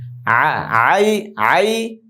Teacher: হলকের মধ্যখান থেকে আইন